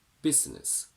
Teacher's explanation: the two S's at the end of business only give one single S sound